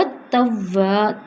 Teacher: تا پہ بھی زور ہے، وا پہ بھی زور ہے، لیکن وا دو حرکت ہے، توابو نہیں ہوگا، اس میں الف آ گیا، وا لمبا ہوگا.